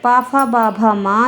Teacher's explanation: पवर्ग पा, फा, बा, भा, मा, ये ओष्ठ से बोले जाने वाले वर्ण हैं, इन्हें ओष्ठ्य वर्ण कहते हैं